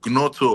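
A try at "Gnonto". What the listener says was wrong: No, so I think the G is silent.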